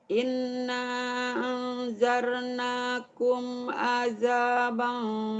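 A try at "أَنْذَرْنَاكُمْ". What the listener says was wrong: Angjar, jangan angjar. Anzar. Anzar. Anzar, dengan anjar. Jangan terlalu rapuh. Anzar.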